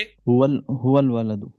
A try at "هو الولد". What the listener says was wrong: هو الولد، الف نہیں پڑھا جائے گا۔ اسم کے ساتھ ملائیں۔